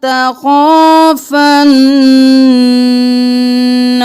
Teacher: خوا زبر الف مد 5 الف کے برابر خوا کو کھینچیں گے